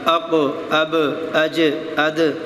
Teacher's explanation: قرآن مجید فرقان حمید میں جب یہ ساکن ہوں گے تو یہ جنبش دے کے ان کو پڑھا جائے گا ہلا کر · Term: حروف قلقلہ